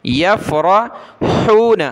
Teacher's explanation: یفرحون، را یہ کلرفل ہے، اس کو موٹا کریں گے، ہا کو گلے سے نکالیں